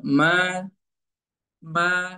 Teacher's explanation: ketika dia masuk alif maddiyah, maka tidak ada dengung di situ